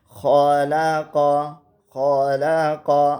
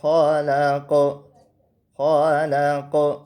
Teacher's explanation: تو خا اور قاف دونوں کو موٹا کر کے پڑھنا ہے